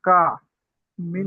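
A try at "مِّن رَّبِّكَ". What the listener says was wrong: মির, মির, মিন নয়, মির রব্বিকা।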